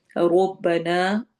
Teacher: رو موٹا پڑھنا ہے، نا پہ مد کرنی ہے کیونکہ آگے حمزہ آ رہا ہے۔ جب بھی اس طرح الف واو یا مدہ کے بعد حمزہ آ جائے تو ہم وہاں پر مد کرتے ہیں لمبی، جس کو ہم چھوٹی اور بڑی مد کہتے ہیں، تو وہ مد ہوتی ہے۔